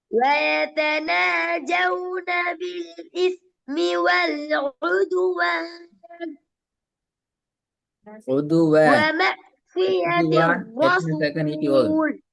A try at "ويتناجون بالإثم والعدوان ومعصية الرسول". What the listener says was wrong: உதுவான் எத்தனை செகண்ட் நீட்டி நிப்பாட்டணும்? நீங்க 1 செகண்ட் தான் நீட்டினீங்க.